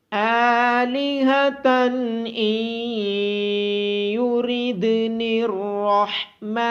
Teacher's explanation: آلِهَةً إِن يُرِدْنِ الرَّحْمَنُ، الف کے اوپر کھڑی زبر ہونے کی وجہ سے الف کو لمبا کیا جائے گا۔ ہا کی آواز گلے کے نیچے والے حصے سے آئے گی۔ نون ساکن کے بعد حروف یرملون میں سے یا ہونے کی وجہ سے ادغام ہوگا اور دال ساکن پہ قلقلہ کیا جائے گا۔ · نون ساکن کے بعد حروف یرملون میں سے یا ہونے کی وجہ سے ادغام ہوگا اور دال ساکن پہ قلقلہ کیا جائے گا۔ را کو موٹی آواز کے ساتھ پڑھا جائے گا۔ حا کی آواز گلے کے درمیان سے آئے گی اور میم کے اوپر کھڑی زبر ہونے کی وجہ سے میم کو لمبا کیا جائے گا۔